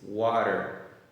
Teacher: o T está no meio de duas vogais. Então, ele vai fazer o som do R em português